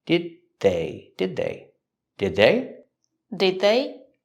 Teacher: Link the sounds. The D at the end of did is a stop D. Link it to the next word.